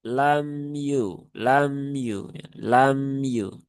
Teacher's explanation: mim itu sifatnya tawasud ya, bukan bukan syiddah. Maka jangan dibaca lam yukhlaq.